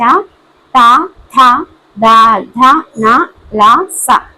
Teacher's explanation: దంతాల సాయంతో పలికే అక్షరాన్ని దంత్యాలు అంటారు